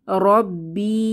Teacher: শেষে ইয়ামাদ এসেছে এক আলিফ টেনে পড়বো